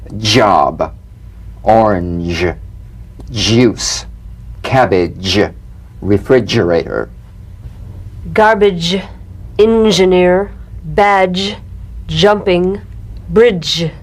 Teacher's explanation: let the tip peel down for the Z H resonance shift use a light quick energetic staccato treatment and feel a voiced percussive sensation flowing from the hard palate onto the gum Ridge